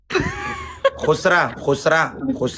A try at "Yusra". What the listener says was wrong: Not khusra. Don't say khusra. Yusra, not khusra.